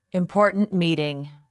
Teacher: Say important meeting with a sharp t at the end of important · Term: last sound